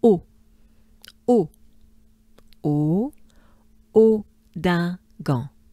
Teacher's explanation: So it's a bit of a closed O for English speakers